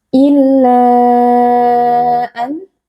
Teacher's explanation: mad jaiz munfasil karena ada mad tabi'i yaitu alif yang sebelumnya berharokat fathah bertemu dengan hamzah di dalam dua kata yang berbeda yaitu pada kata an. Nah, di sini mad jaiz munfasil dibaca panjang 4 atau 5 harokat.